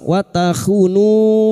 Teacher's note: bertemunya mat dengan hamzah di lain kalimat, mad jaiz munfasil. Pada saat dibaca terus kita panjangkan 5 harakat.